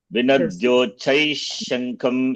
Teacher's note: Visarga followed by the shar letter. Visarga will take the sound of the sibilant.